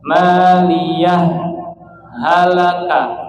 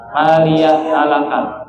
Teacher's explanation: itu berhenti tanpa mengambil napas kemudian lanjut ya contohnya gimana maliah halaka Tapi jangan ngambil napas nah itu maliah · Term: sakta